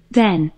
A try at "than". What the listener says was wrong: than이야, than. 비슷하게 생겼죠. 하지만 얘는 than이야. e가 뭐 중에 뭐 됐냐? e에 어 됐네요. 그래서 th가 z 됐고요. than 됐습니까?